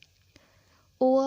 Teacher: ओ, औ का उच्चारण कंठ और ओष्ठ दोनों से होता है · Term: कंठौष्ठ्य